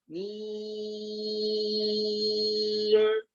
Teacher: Panjangnya mesti 6 harokat. Dan khaysyumnya di mim saja. Mim pertama dan mim terakhir. Yang dipanjangkan itu tidak ada khaysyum.